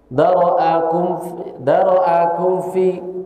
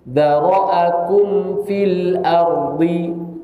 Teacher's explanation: Mim sukunnya itu jelaskan, jangan disembunyikan. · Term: idhar